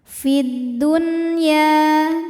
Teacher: syamsiyah sebab alif lam menghadapi huruf Syamsiah yaitu huruf Dal maka alif lam tidak kita baca jadi langsung dimasukkan oleh karena itu alif lam syamsiah biasa disebut dengan Idgham Syamsi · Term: alif lam syamsiyah